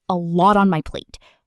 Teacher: a lot on my plate gets linked together in fast speech, sounding like a lot on my plate, almost like one long word. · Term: Linking